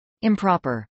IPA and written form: ˌɪmpˈɹɑːpɚ (improper)